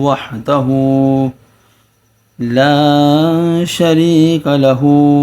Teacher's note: یہاں یا مدہ اس کو کھینچیں گے، یا الف مدہ اس کو بھی کھینچیں گے